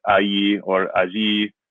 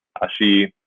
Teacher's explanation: depending on if you pronounce the double L as kind of the ya sound or the sh sound, which you might do in Argentina